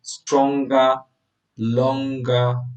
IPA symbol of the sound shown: ŋɡ